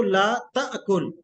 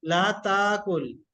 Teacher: اس میں ایک تو یہ کہ آپ حمزہ کو جھٹکے سے بھی پڑھ سکتے ہیں اور اس کو سافٹ کر کے پڑھ سکتے ہیں